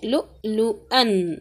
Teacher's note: لؤلؤن، اب دیکھیں یہاں پر حمزہ ہے، حمزہ کے اوپر جب بھی اگر ساکن آ جائے تو کیا ہوگا، وہاں پر جھٹکا دیں گے